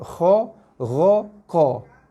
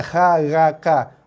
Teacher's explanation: ketiga-tiga huruf tu bunyi dia bulat. Kho, ro, ko. Hati-hati bukan kha, ra, ka. Kho, ro, ko.